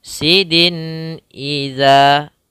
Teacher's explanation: Apabila ada tanwin bertemu dengan hamzah, maka kita namakan dengan izhar. Hukum bacaannya adalah izhar halqi, yaitu membaca tanwinnya dengan jelas.